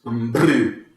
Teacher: building up pressure behind the lips and then letting them flap about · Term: bilabial version